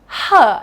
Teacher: when you say the sound your tongue is pulled backwards huh it's a voiceless sound you can feel a lot of puff of air for this sound